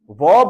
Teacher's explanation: व बोलते समय जो आपका नीचे का होठ होता है वह दांतों को टच करता है इसलिए दांत भी काम कर रहे हैं और होठ भी काम